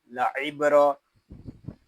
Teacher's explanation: با ساکن ہے، اس میں کلکلا خوب ظاہر کریں گے